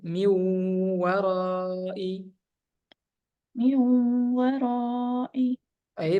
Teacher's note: m ditahan sedikit ada dengungnya